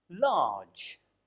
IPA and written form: lɑːdʒ (large)